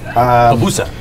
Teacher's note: The accents on the second syllable.